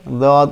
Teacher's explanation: জিহ্বার গোড়া সামনের দাঁতের সাথে না লাগিয়ে মারি দাঁতের গোড়ার সাথে লাগিয়ে দদ উচ্চারণ করতে হয়।